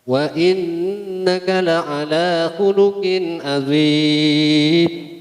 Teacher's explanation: Wa innaka dibaca gunnah atau ditahan karena mengandung hukum gunnah, yaitu nun tasdid